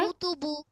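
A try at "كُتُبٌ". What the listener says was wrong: কুতুবু হবে না, কুতুবুন, দেখো তো।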